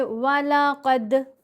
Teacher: काफ को मोटा पढ़ेंगे और दाल से मिलाएंगे। दाल के ऊपर हमने कलकला करना है।